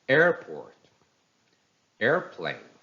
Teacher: the first syllable takes a stress